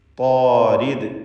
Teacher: ചേർത്തോതുമ്പോൾ വമാ അന ബിതാരിദിൽ മുഅ്മിനീൻ, താരിദ്, ഈ പദത്തിൽ താഇനും അലിഫിനും തഫ്ഖീം കൊടുക്കണം. മറ്റക്ഷരങ്ങൾക്കൊന്നും തഫ്ഖീം വരുന്നില്ല.